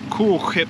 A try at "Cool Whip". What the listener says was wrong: Why put some emphasis on the H?